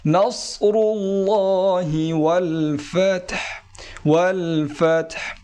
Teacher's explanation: সাদ মোটা হবে একটু মোটা করে উচ্চারণ করতে হবে